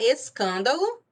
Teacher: se eu observar a sílaba tônica ela é a terceira de trás para frente então ela é uma proparoxítona